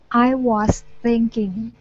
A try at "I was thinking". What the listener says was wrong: All right, good.